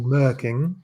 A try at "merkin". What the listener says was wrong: can you stop? Can you please stop putting a G at the end of Merkin? It's a Merkin, not a Merking.